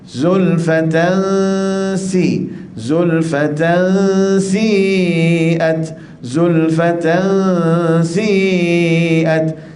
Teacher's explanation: Si itu panjang dia, qadar dia 6 harakat. Sebab sini mesti mad lazim ya.